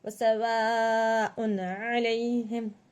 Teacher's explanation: یہاں پر ہم کھینچ کے پڑھیں گے 5 الف کے برابر, اور حرف مدہ بھی ہو رہا ہے اور یہاں پر حمزہ کو اظہار کر رہے ہیں کیونکہ حمزہ کے بعد عین آیا ہے حرف حلقی میں سے. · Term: مد متصل